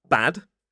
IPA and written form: bæd (bad)